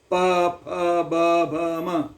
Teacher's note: ಪ ಫ ಬ ಭ ಮ ಉಚ್ಚಾರಣೆ ಬರಬೇಕಾಗಿತ್ತು ಅಂತಂದರೆ ಎರಡೂ ತುಟಿಗಳು ಒಂದಾಗಿ ಗಾಳಿ ಹೊರಗೆ ಬರಬೇಕು.